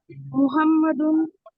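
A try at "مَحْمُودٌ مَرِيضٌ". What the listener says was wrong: মারিদুন, মাহমুদুন মারিদুন, মুহাম্মাদুন মাহমুদুন, মুহাম্মাদের কাছে ওয়াওটা নাই। মাহমুদুন মারিদুন,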